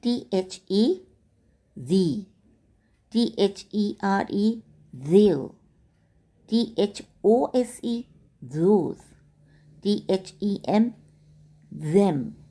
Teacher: इन शब्दों को बोलते वक्त आपके गले पर रखे हुए हाथों को झंझनाहट हुई होगी, यानी वाइब्रेशन फील हुआ होगा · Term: Voiced TH digraph